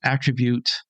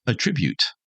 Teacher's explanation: when we're using it as a verb, we put the accent on the second syllable.